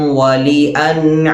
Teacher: മതാഅൻ ലക്കും വലിഅൻആമിക്കും. വലി വാവിൻ്റെ മഖ്റജ് രണ്ട് ചുണ്ടുകളാണ്. അതുകൊണ്ട് തന്നെ വ എന്ന് പറയാതെ വ എന്ന് ചുണ്ട് മുന്നിലേക്ക് പരമാവധി കൂർപ്പിച്ചുകൊണ്ട് പറയണം.